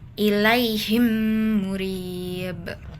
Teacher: Jadi saat berhenti pantulkan huruf ba. · Kalau yang ini kan di akhir kalimat atau saat waqaf, berarti hukum bacaannya qalqalah kubra dan ba-nya dibaca dipantulkan dengan kuat. Karena berada di akhir dan diwakafkan.